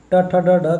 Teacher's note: क वर्ग का उच्चारण स्थान कंठ, क ख ग का कंठ, च छ ज झ इया का तालु होता है, ट ठ ड ढ का मूर्धा होता है